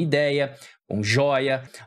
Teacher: ideia por exemplo você vê que a sílaba tônica é a penúltima